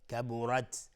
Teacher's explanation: کبرت را مفخم هست چون فتحه داره، تا صفت همز داره.